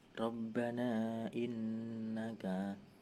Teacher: Di ayat 9, Rabbana innaka, ro dibaca tafkrim, mad jaiz munfasil sebab mad tabi'i bertemu hamzah. Pada lain kata panjangnya 2-5 harokat.